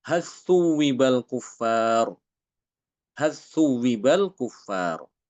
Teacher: Imam Hisham di situ membaca dengan mengidghamkan lam hal ke sa.